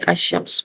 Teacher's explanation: حروف شمسی جس طرح سورج کی روشنی میں چاند چھپ جاتا ہے، بالکل ایسے ہی حروف شمسی آنے کی صورت میں لام نہیں پڑھا جاتا، ادغام ہو جاتا ہے، اگلے حروف پر تشدید آ جاتی ہے